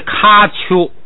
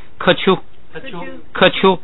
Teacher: 本来是咔丘，因为乌是闭元音，所以变成科